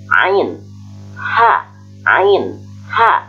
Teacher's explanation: wasthal halki atau tengah-tengah tenggorokan, yaitu ain dan ha